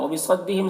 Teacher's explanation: صاد کو پر پڑھیں گے، حروف مستعلیہ میں سے ہے، اور ہم کے میم میں اظہار شفوی ہو رہا ہے، اسے جلد پڑھنا ہے۔